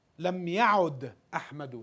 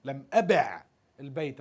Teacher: So what happened is the waw drops.